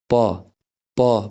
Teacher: दुइटा ओठ एक आपसमा जोडियो ब्लक भयो यहाँ निर प यसरी प्रोडुस भयो।